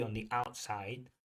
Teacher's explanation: Notice that dropping of the T on the outside.